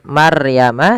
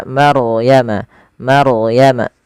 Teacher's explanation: ada bacaan ro tafkhim, yang dimana ronya wajib kita, bukan wajib, ronya dibaca dengan tebal, ya, tidak dibaca dengan Maryama tapi dia Maryama, Maryama.